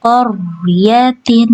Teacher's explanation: untuk huruf ro di sini dia dibaca tebal ya atau tafkhim. Kemudian agar tidak dipantulkannya bisa sambil dialirkan aja huruf rnya ya.